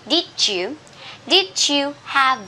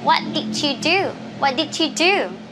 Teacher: word end with d and the second word uh begins with a y you know so you can match them together and pronounce them as the j